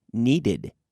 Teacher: in the past we get an extra syllable because it ends in a d